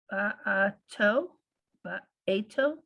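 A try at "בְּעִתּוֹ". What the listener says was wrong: Try that vowel one more time under the ayin. One dot. One dot. Beito.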